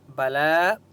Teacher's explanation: لام کے اوپر کھڑا زبر ہے، اس لیے لام کو ایک الف کی مقدار کھینچ کر پڑھیں گے، اس یا کو نہیں پڑھیں گے